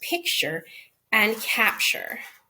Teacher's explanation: when you co-articulate it it comes out more like a ch like an affricated consonant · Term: co-articulation